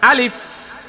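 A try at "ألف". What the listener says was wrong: না না না আরো দ্রুত বলতে হবে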